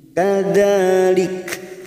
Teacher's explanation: Pada saat mewakafkan ada huruf kaf yang mempunyai sifat hamz, maka bunyinya lik.